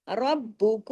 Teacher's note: रा को हैवी करके ब को डबल और सख्ती से · را کو ہیوی کر کے، با کو ڈبل اور سختی سے اور ڈبل